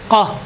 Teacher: ये काफ ज़बान की जड़ अंदर जो ऊपर तालु का जो हिस्सा है, आखिरी हिस्सा जो मोटी जगह है, उभरी हुई गोश है, वहाँ लगती है ज़बान की जड़ काफ में।